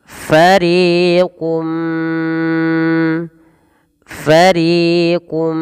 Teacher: tanwinnya masuk kepada huruf Mim dan diganti bunyi suara mim · minhum tapi langsung mengasuk kepada mim farium kemudian langkah yang kedua ditahan suara mnya sepanjang dua harakat karena disertai dengan gunah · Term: Idgham bhunah